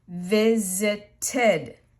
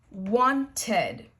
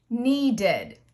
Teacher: it will be pronounced id, and you will give it an extra syllable